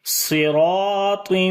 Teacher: الف کو موٹا پڑھیں گے کیونکہ الف سے پہلے والا حرف موٹا ہے, اس وجہ سے الف بھی موٹا ہوگا